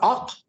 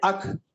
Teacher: تو اس کی وجہ کیا ہے میں آپ کو بتاؤں کہ دونوں مخرج بالکل ساتھ ساتھ ہیں. قاف کے مخرج سے ذرا اوپر کاف کا مخرج ہے تو بجائے یہاں سے ادا کرنے کے وہ اس کو وہاں سے ادا کرتے ہیں.